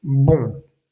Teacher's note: los sonidos salen eh por la nariz y por la boca · Si el sonido cambia totalmente es que lo estás haciendo bien. Es decir, estás obstruyendo un poco el sonido y un poco de aire sale por la nariz y un poco de aire sale por la boca. Si no cambia es que te hace falta todavía un poco más eh obstruir o digamos que impedir que todo el aire salga por la boca y que salga un poco más por la nariz. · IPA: /bɔ̃/